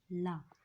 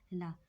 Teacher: इसको बोलने में हमारी जीभ जो है ऊपर के दांतों से टकराते हुए पलट जाती है, ला, तब इसका उच्चारण निकलता है। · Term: पार्श्विक